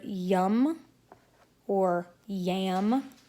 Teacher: We'll move on to glides. There is the y, as in the word yum or yam, which is made at the roof of the mouth